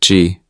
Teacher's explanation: This sound is between G and K. It is a soft sound.